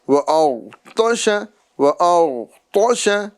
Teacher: غین کو بھی پر کرنا ہے، غین میں قلقلہ نہیں کرنا ہے،